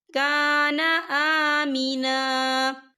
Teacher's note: ومن دخلہ کان آمنا، یا دیکھیں آپ کو چھوٹی سی توئی لکھی نظر آ رہی ہے، تو یہ وقف مطلق کی علامت ہے، تو یہاں پر ٹھہرنا بہتر ہے۔ وقف کی صورت میں ایک زبر پڑھا جائے گا، دو زبر نہیں پڑھے جائیں گے۔